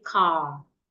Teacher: in standard British English, if I want to pronounce this word in isolation, I will not pronounce the R sound in it. I will just say car.